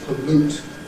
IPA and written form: pəˈluːt (pollute)